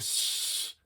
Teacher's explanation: the S sound it's actually a high frequency